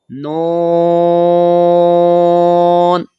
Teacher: نون ساکن ہے تو یہ غیر قلقلہ ہے تو آواز لوٹ کر نہیں آئے گی، اور نون کو ہم کھینچ کر پڑھیں گے